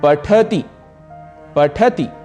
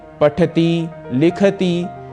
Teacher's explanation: अंतिम ह्रस्व ई को ह्रस्व ही रखना है दीर्घ नहीं करना है